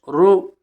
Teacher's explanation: معروف پڑھیں، مجہول آواز سے بچیں. پیش کی آواز آگے کو جاتی ہے اور ہونٹ گول ہوتے ہیں